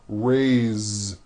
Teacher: Now this word is a bit unusual because even though it is spelled with an S, it's pronounced with a voiced Z.